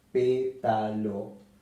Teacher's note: la palabra pétalo tiene tres sílabas Pétalo y se acentúa en la antepenúltima sílaba